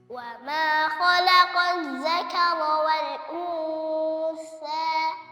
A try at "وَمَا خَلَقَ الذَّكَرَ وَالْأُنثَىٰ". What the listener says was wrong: Ngeluarin lidahnya dari awal. Jangan lidahnya di dalam dulu baru dikeluarin. Jadi sudah langsung ke makhraj tha. Wal untha.